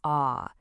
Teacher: it's a long, open ah. Then in lane, it becomes A.